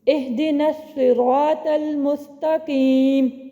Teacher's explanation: حمزہ وصلی ابتدائے کلام میں تو پڑھا جاتا ہے لیکن وسط کلام میں حذف ہو جاتا ہے